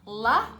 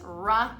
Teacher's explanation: La, tongue touches, ra, it doesn't touch.